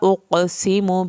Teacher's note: सीन को सीटी की आवाज़ के साथ पढ़ेंगे